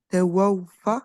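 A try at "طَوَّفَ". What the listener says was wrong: En fait, c'est juste que sur le waw, tu dois bien faire wa, genre parce qu'il y a une shadda, donc c'est tawafa, tawafa.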